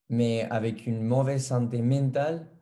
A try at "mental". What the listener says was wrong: mental, pas mental. Non, tu dis men. men, c'est mental. Toi, tu dis comme la menta. mais en français, c'est mental.